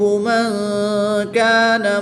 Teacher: نون ساکن کے بعد کاف حروف اخفا میں سے ہے تو یہاں پر اخفا کریں گے یعنی غنہ زمانی کر کے پڑھیں گے